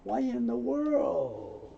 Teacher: The Y moves over, so we get a Y in.